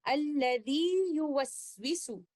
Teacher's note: اس کا مخرج زبان کے مڈل سے ہے، تو یہاں پر ہم مد لیٹر یا کو مد طبیعی کے 2 کاؤنٹس دیں گے اور بعد میں آنے والے لیٹر یا کو بھی اظہار کے ساتھ پڑھتے ہوئے ان الفاظ کی ادائیگی اس طرح سے کریں گے، الذی یوسوس۔